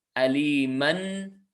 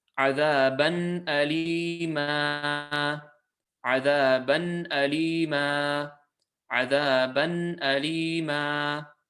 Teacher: We substitute this fatha tanween and we substitute it into a fatha and alif, and in doing so we get our lengthening sound, and by doing so it is elongated to 2 lengths long. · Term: mad al-iwad